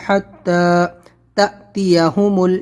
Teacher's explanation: یہاں پر حمزہ ساکنہ کو پڑھنے میں جھٹکا ہوتا ہے